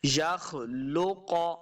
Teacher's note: یخلق، یخ، خواب موٹا پڑھیں گے، یہ نون نہیں ہے، بعض لوگوں کو یہ نون نظر آتا ہے جبکہ یہ نون نہیں ہے، یہ خا ہے، تو خا حروف مستعلیہ سے ہے تو اس کو موٹا پڑھنا ہے۔ یخلق، قاف کو بھی ہم موٹا پڑھیں گے